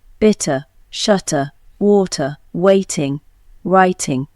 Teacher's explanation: in British English T is usually pronounced quite clearly